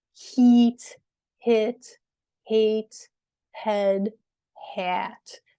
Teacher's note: So your lips become sort of more open as you go through these. And your tongue placement also changes.